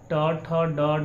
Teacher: टठ डढ़ का उच्चारण स्थान जो है हमारा मूर्धा हो गया